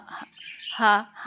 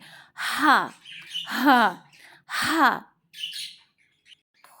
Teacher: ये हलक के बीच में से निकलेगा, वाइब्रेशन वहीं होनी चाहिए। हम मुंह से निकाल लेते हैं, हा हा हा नहीं है, हा हा हा।